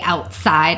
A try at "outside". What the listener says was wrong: You don't even pronounce the T in outside. There's no T in outside.